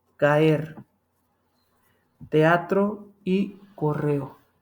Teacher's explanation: Te das cuenta que hay dos vocales abiertos en las tres palabras, por eso se separaron. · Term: hiato